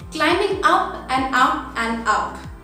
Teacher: I have just increased the pitch where I am walking towards the staircase, climbing up and up and up.